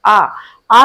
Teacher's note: आ का उच्चारण करते हैं, मुख हमारा पूरा खुल जाता है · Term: विवृत स्वर